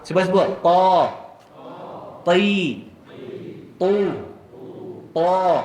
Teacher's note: Huruf yang berganda-ganda tebal. Jadi ta ni kita kena buka mulut boleh masuk 2 jari pasal dia tebal.